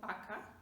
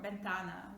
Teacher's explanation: Now, you might hear me say vaca, not vaca, and that's okay, because when you talk and you listen to Spanish speakers, you will notice that they pronounce V just like something in between, I would say, between V and B